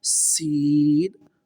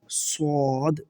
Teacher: صاد دیکھیں آپ، جیسا کہ پیچھے پڑھا حروف مستعلیہ میں پر پڑھیں گے، اس کو موٹا پڑھیں گے۔ سین کو باریک اور صاد کو موٹا پڑھیں گے